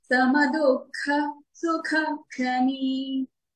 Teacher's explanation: సమ రెండు హ్రస్వాక్షరాలండి. దుఃఖ ఖా చూడండి, ఇది మహాప్రాణి, ఒత్తుగానే పలకాలి.